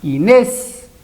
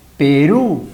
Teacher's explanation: como podemos notar acá la sílaba tónica es la última · la sílaba tónica es la última. Inés, palabra aguda.